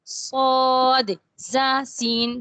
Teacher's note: اچھا، ان کو مخرج کے اعتبار سے حروف اصلیہ بھی کہتے ہیں، اور اس کا مشہور نام حروف صفیریہ ہے، کیونکہ ان میں سیٹی کی آواز ہوتی ہے نا، صفیر سیٹی کو بولتے ہیں، تو اسی وجہ سے ان کو ہم نے حروف صفیریہ کا نام دے دیا ہے۔